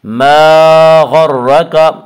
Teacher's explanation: یا ایہا الانسان ما غرک، ما الف مدہ، الف میں شا مدہ ہوتا ہے، الف سے پہلے میں شا زبر ہوتا ہے، الف مدہ کو ایک الف کے برابر کھینچ کر پڑھیں گے۔ ما غرک، غین کو پر پڑھیں گے، غین حروف مستعلیہ میں سے ہے۔ حروف مستعلیہ 7 ہیں جن کا مجموعہ خصہ ضغط قز ہے، جو ہمیشہ ہر حال میں پر پڑے جاتے ہیں۔